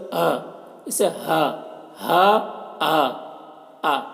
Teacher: हमजा और हा हा और हमजा इन दोनों का मखर हलक का आखरी हिस्सा है